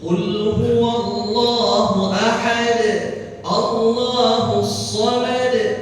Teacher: Jadi betul-betul dipantulkan karena qalqalah kubra.